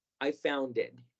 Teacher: la conexión entre found e it, que sonó como si fueran dos palabras, que son dos palabras, pero naturalmente hablando suenan como una sola. Así que vamos a tratar de pronunciar estas tres palabras como una sola.